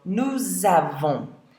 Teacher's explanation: So notice that usually in French, you don't pronounce an S when it's on the end of the word, but when it's followed by a vowel, like it is in this case, we will pronounce it